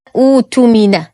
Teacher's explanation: فتكون القراءة حال الابتداء حذف الهمزة الثانية وإبدالها بحرف مد أوتمن. نلاحظ أن ثالث حرف في الفعل مضموم ضما أصليا تو.